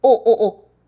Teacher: This has a 받침, right? And when this is placed as a 받침, it's a T, soft T sound, not a S sound anymore